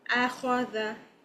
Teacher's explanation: you have to raise your aqsal lisan for the heavy letter kha